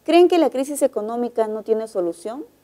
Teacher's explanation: esa es una pregunta y el tono final es ascendente